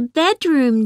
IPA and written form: ˈbedrʊm (bedroom)